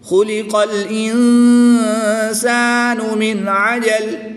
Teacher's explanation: دو زیر کی تنوین کو وقف کی حالت میں ساکن کر کے پڑھیں گے۔